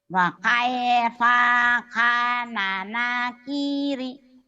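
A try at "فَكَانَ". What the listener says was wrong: Fakai bukan wa tapi fa. Fakai fakanana kiri. Fa-nya kamu kalau ada pa pasti panjang. Pakai pa kan fa-nya pendek. Fakai faka, fakai faka. Fakai fakana nakiri.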